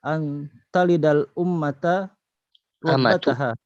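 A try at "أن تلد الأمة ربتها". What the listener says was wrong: Antalidal amatu, bukan ummah ya. Antalidal amatu rabbataha.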